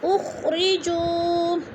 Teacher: اخرجوا، واو ساکن سے پہلے جیم کے اوپر پیش ہے تو ادھر بھی واو مدہ کو 1 الف 2 حرکات کے برابر ہم نے لمبا کر کے پڑھنا ہے